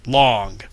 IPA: lɑŋ